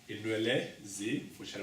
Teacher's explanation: when N comes in front of F, that N becomes M. The nasal sound N becomes M.